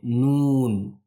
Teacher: बाकी किसी भी हर्फ में नाक के अंदर आवाज नहीं जाती है। लेकिन मीम और नून अदा करते वक्त आवाज नाक के अंदर जाती है। और इसको भी नून जब हम अदा करते हैं तो थोड़ा इसको खींचना भी हमें जरूरी है। · और इसको भी नून जब हम अदा करते हैं तो थोड़ा इसको खींचना भी हमें जरूरी है। जब हम नून अदा करते हैं तो इसको नून को अदा करते वक्त हमें थोड़ा खींच कर हम इसको पढ़ेंगे